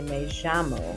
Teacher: it can just regionally have a j sound, kind of like that French J, je, me llamo.